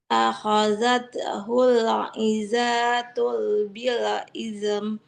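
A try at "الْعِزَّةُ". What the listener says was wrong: Zainya nggak panjang, tapi zainya ada tasydidnya. Nah, akhazat hul izzatu bil ism. Akhazat. Oke, nggak izatul karena di depannya nggak ada lam sukun ya. Akhazat hul izzatu bil ism. Izzatu.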